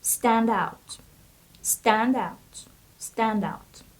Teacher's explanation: The stress of this word is on the first syllable.